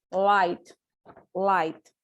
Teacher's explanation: the place of articulation is alveolar · The air has to flow in both sides of our tongue, and the tongue is placed in the alveolar, in the roof of our mouth, and is voiced sound, and it's liquid sound.